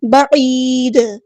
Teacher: دال کو ہم ساکن کر دیں گے وقف کرتے ہوئے، اور جب ہم ساکن کریں گے تو یہاں پہ جو ہے قلقلہ ہوگا